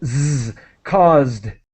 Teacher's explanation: So it's a Z sound, Z, caused, with a D sound as quick as possible.